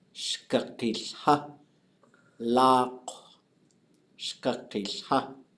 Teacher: she regularly makes a voiced L sound in the spot where the N sound would be.